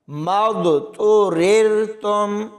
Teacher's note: ان دونوں را کو آپس میں ملاتے ہوئے باریک پڑھا جائے گا · اس میں دیکھیں اس میم کو ضاد کے ساتھ ملائیں گے اور ضاد کے اوپر کلکلا ہوگا